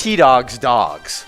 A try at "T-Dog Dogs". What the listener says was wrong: T-Dog. There's no S in it, though. It's just T-Dog Dogs.